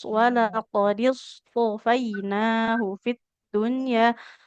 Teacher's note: huruf sod, jangan seperti sin, jangan tipis